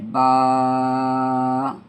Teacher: बा को एक अलीफ खींचना है । यानी एक उंगली आपने अ खोलनी है। यानी आपकी मुट्ठी